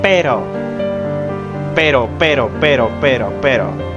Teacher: Notice your tongue at that single R. It's a quick, light tap. It's tapping pero, pero, pero inside of your mouth. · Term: flap, flap T